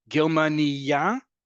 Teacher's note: Germania, emphasis on the last syllable, a female German person.